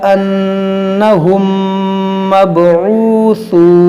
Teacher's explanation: मीम साकिन के बाद दूसरी मीम है तो यहाँ पर होगा इदगाम शफवी